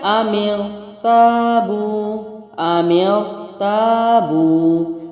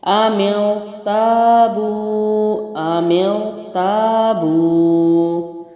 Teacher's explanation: را موٹا پڑھنا ہے، تا الف، الف مدہ ہے، واو ساکن پیش ہے اور یہ واو مدہ ہے.